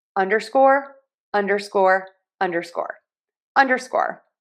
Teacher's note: stress syllable number one and then secondary stress on syllable number three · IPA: /ˈʌn.dɚ.skɔr/